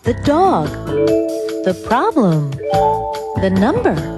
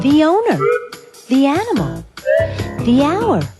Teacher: you hear thee before a vowel sound